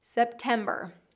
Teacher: the hardest part usually is just that vocalic R at the end.